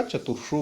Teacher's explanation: रा के बाद सा आया है, इसीलिए इसको मूर्धनी सा हुआ है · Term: मूर्धनी शकार